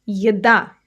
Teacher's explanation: The stress is on the second syllable, by the way.